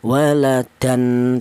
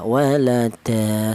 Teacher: Jadi ini tanwinnya tanwin fathah ini dibaca seperti fathah biasa dan dipanjangkan dua ketukan · Tidak boleh tanwin ini dibaca utuh berupa tanwin, tidak boleh ya, seperti contoh waladan, tidak boleh ya. Jadi ini tanwin fathah ini dibaca seperti fathah biasa dan dipanjangkan dua ketukan ya, walada, seperti itu. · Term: mad iwat, mad iwad